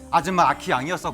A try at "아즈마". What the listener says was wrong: 발음 잘해야 돼. 아줌마가 아니라 아즈마.